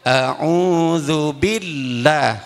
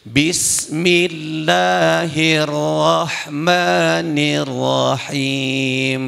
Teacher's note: lafaz Allah ada tasydid, berarti tertahan 1 ketukan